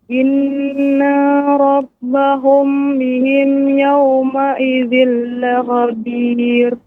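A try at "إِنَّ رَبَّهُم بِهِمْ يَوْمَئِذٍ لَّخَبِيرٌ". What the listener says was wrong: Ya, inna nun yang bertasydid tidak dipanjangkan Ibu, ya. Tadi Ibu panjangkan, seharusnya dia pendek. Inna rabb, ya. Na rob, inna rob, tidak ada jeda. Inna rob, maka nanya dipanjang, jadi diharokat. Maka dibaca dengan cepat. Inna rabbahum bihim yawma idzil lakhabir.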